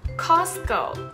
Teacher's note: T▁が完全に消えてなくなってしまう▁Silent▁T▁というルール